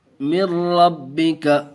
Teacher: دیکھیے ناظرین، یہاں بھی ادغام یرملون کا قاعدہ کہ نون ساکن کے بعد ادغام یرملون کے 6 حرفوں میں سے را آیا ہوا ہے، اس لیے بغیر گنہ کے پڑھیں گے۔